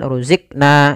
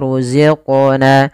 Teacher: pada lafal qaf ada bacaan qalqalah. Yaitu suara qafnya dipantulkan. Kesalahan yang terjadi adalah dia tidak memantulkan.